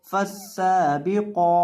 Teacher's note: قوف کو لمبا بھی کریں گے اور موٹا بھی